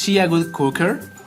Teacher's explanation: uses declarative word order to ask questions with a rising intonation at the end